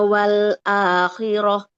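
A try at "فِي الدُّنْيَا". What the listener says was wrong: Fid dunya. Nah, jangan fit ya. Tidak seperti ke T, kan double D ya. Huruf D itu miripnya. Nah, huruf dal. Nah, miripnya D.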